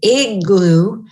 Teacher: the vowel is shorter in duration and raised up. And there's a division here between G and the stop and the O.